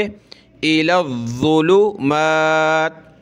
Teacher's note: لام کو ضا کے ساتھ ملائیں گے